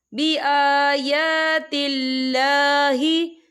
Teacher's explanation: یا کھڑی حرکات ہے، تو ہم اسے 2 یا 3 حرکت کی برابر کھینچ کے پڑھیں گے